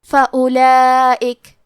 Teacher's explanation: ہمیں واو کو ظاہر نہیں کرنا ہے، الف کو پیش سے پڑھ کے حرف اللام کو پڑھیں گے، فأولئک۔ لام کے بعد کھڑا زبر ہے اور اس پہ مد کا علامہ ہے، یہ مد واجب متصل ہے۔